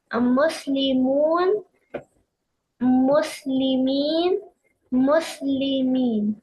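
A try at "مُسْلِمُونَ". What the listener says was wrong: Yeah, in this class, I would like you to say instead of Muslimun, Muslimuna. Okay, say the haraka on the last letter. Muslimuna, Muslimina, Muslimina.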